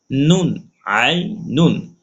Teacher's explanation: নুন দুই পেশ নুন, আই নুন, পেশে ঠোঁট গোল